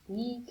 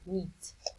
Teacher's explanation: The vowel is in front of a voiced consonant is longer than the one in front of a voiceless consonant.